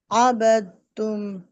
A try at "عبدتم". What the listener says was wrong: अबद तुम दाल की साउंड है। नहीं, दाल की साउंड आ रही है आपकी। अबद तुम, बद तुम नहीं है।